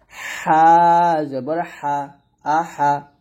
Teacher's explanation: হাটা হলকের মাঝখান থেকে চাপ দিয়ে একটু চিকন করে বাতাস বের করে উচ্চারণ করতে হবে, এরকম একটা শ্বাস বের করে উচ্চারণ করবেন।